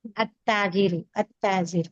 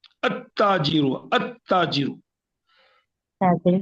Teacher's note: التاجر التاجر ہاں یہی تو سمجھانا ہے آپ کو کہ یہاں پر لام کی آواز نہیں آنی ہے, تبھی تو شمسیہ ہے